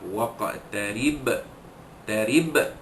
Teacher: qalqalah sughra, lantunan kecil pada huruf qalqalah qaf yang mati di tengah kalimah